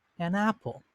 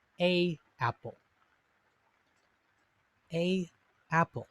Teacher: notice that we have to sort of stop our breath stop our voice between the a and the apple